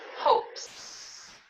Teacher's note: Hope ends with p, which is voiceless. So we're going to add an S onto it.